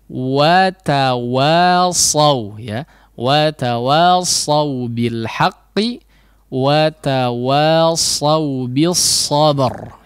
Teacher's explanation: perhatikan huruf waw yang difathahkan ya, difathahkan betul-betul difathahkan, mulutnya dibuka